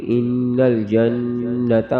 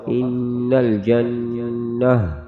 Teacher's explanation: وقف میں گول تا، وقف میں گول والی ہا بن جائے گی